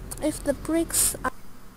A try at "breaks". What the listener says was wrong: breaks, not bricks, breaks.